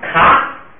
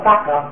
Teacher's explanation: 卡如果放在第2音节读成咔，而且不送气就读成了嘎，既变高调又变不送气 ，就实际发音就成了第1行发音了。第2个卡变成掐，然后呢再不送气就变成了加。第3个塔变成平声是他，再变成不